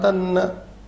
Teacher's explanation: ta followed by ma, it becomes na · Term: Anurasika Sandhi